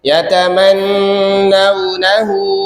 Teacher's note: nun tasydidnya jangan ketinggalan sama mat yang 4-nya tuh. Yatamannawnahu 4, mat silah tawilah.